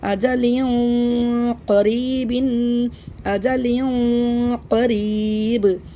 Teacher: यहां पे हम इफा करेंगे मोटा इफा क्योंकि कौफ मोटे हुफों में से है